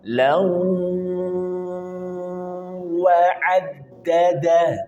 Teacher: Pastikan ada ghunah dengung la masuk ke rongga hidung la. Kemudian tahan dua sampai harakat. · Perhatikan ada tanwin di sini bertemu dengan wawu, idgham bi gunnah. Pastikan ada gunnah dengung.